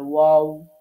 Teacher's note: তো এটার মধ্যে একটু পার্থক্য আছে। আমরা যখন ওয়াওটা উচ্চারণ করব তখন দুইটা ঠোঁটকে ফাঁকা রাখতে হবে, ওয়াও, ঠোঁট দুইটা গোল করতে হবে।